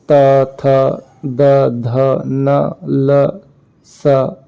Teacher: और कुछ वर्ण समूह होते हैं जिनका उच्चारण मूर्धा से होता है, जैसे ट, ठ, ढ, ढ, ण, र, श। और कुछ वर्ण समूह होते हैं जिनका उच्चारण ऊपर के दांतों पर जीभ लगाने से होता है